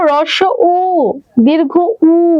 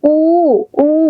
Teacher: দুটাতেই আমার ঠোঁটটা একদম গোল হয়ে যায়, তাই না? উ, উ, তাহলে ঠোঁটে লাগছে, আর ঠোঁট মানেই হচ্ছে ওষ্ঠ, তাই এটার নাম হচ্ছে ওষ্ঠ ধ্বনি।